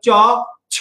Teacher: এই ছ উচ্চারণ করার সময় তোমার হাতে বেশি বাতাস লাগবে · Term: মহাপ্রাণ ধ্বনি